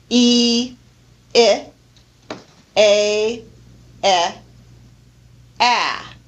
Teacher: the jaw becomes increasingly lowered and also the tongue lowers as well as we pronounce these different vowels from high to Mid to low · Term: front vowels